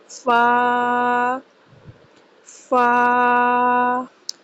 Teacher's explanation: فا کو 1 الف کے برابر لمبا کیا جاتا ہے۔